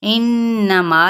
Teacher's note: اور 4 حرکات کے برابر لا اس کو کھینچیں گے، انما یہاں پہ غنہ کرتے ہوئے مد اصلی بالالف